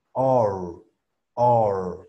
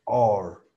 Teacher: En esta R, R, tu nariz como tal bloquea completamente tus fosas nasales y pues hace este cambio de O a R, OR, OR, ¿vale? Se alarga un poquito esa O torpe, OR. Luego tenemos lo que sería la K de kilo, ORC, ORC, ORC.